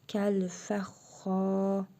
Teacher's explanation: Xa hərfində həm şəddə var, həm də hərfi məd var. Bir əlif miqdarı uzadırıq.